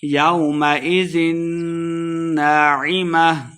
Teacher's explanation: وجوہ یومئذ نون مشدد ہے غنہ کر کے پڑھیں گے